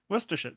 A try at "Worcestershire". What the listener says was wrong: You pronounce it too slow.